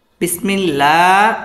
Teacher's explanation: আল্লাহ শব্দের লামটা বারিক হবে